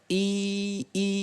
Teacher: kasra itu terletaknya itu adalah menyempitnya kalau fathah itu membuka kalau kasra itu menyempitnya antara tengah lidah dan langit atas sehingga cukup kita baca i i letaknya itu di dalam I